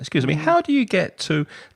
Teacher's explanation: that rising intonation makes your request more polite